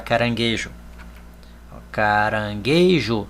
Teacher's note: Vejam que todas as 6 palavras, a sílaba tônica é a penúltima. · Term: paroxítonas